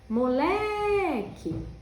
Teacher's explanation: Olha como o Lé ficou comprido, tá vendo? Então, o Lé é a sílaba tônica.